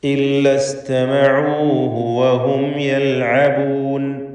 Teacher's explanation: ഐൻ വ്യക്തമായി മഖ്റജിൽ നിന്ന് ഉച്ചരിക്കാൻ ശ്രദ്ധിക്കുക. തൊണ്ടയുടെ മധ്യമാണ് ഐനിൻ്റെ മഖ്റജ്. വഹും യൽഅബൂൻ, വഹും യൽഅബൂൻ, സാക്കിനത്ത് മീമിനെ ഇൽഹാർ ഷഫവി നൽകി മണിക്കാതെ വെളിവാക്കേണ്ടതാണ്.